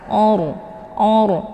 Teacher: rnya dibaca tebal dengan posisi pangkal lidah naik ke atas